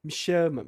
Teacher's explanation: me chama, olha só, uma sílaba fraca, uma sílaba forte